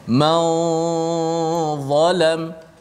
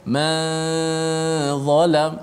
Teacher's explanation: ikhfa nun pada dha ini, dia bunyi dia ada tebal sedikit, bunyi tafkhim tebal pada gunnah